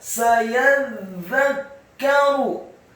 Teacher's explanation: za-nya ditasydidkan tipis, lidahnya agak keluar sedikit, kasrah satu harokat, kafnya dibaca sukun dan ada pantulan tipis.